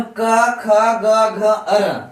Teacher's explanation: अगर क, ख, ग, घ, अर पढ़ते हैं तो ये हमारे कंठ से, ये जितने भी वर्ण है सभी कंठ से आ रहा है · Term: कवर्ग